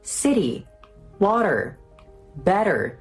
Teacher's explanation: the tip of your tongue gently taps against your alveoli, that area just behind your teeth, like so. If you struggle with it, try saying a very soft D. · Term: flap T